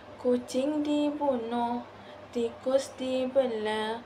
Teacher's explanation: semua suku kata diucapkan dengan cepat tanpa sebarang penahanan vokal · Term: pemendekan vokal